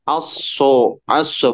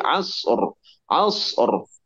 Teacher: terus dilatih supaya tidak terdengar pantulan e-nya